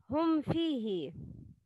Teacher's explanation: If ميم has سكون sign on it, it's إظهار شفوي. Pronounce clear ميم without غنة